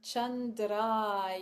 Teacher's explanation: the r uh in Sanskrit is a rolled kind of a rolled R so is kind of putting the tip of your tongue um